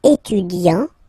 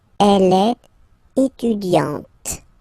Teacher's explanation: you don't really insist on the E, but you insist quite much on the T